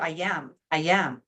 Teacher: There's a Y sound in there, I am.